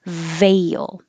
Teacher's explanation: make your top teeth on your bottom lip the same position as f but with voicing